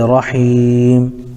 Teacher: میم چونکہ آخر حرف ہے، یہاں پر وقف کرنے کی وجہ سے میم کو ساکن کر دیں گے، جیسے رحیم۔